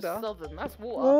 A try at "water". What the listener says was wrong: It's a D instead Of a T.